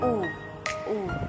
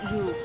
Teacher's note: U is a pure vowel, the tongue remaining absolutely steady throughout the production of the sound, not relaxing halfway through and moving toward the AW sound as in English shoe.